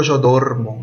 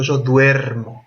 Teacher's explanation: Yo no digo yo dormo yo digo yo duermo vieron que la sílaba tónica está ahí donde hay ue